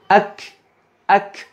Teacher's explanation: ketika sukun, huruf kaf juga sama, jangan terlalu berlebihan dalam menampakkan sifat hamsnya atau hembusan udaranya sehingga menghilangkan sifat syiddah, ketegasan dan kekuatan dari huruf kaf itu sendiri yang mesti selalu ada.